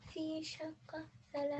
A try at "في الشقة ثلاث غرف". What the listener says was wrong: No, not في شقة. في الشقة. There's a lamb.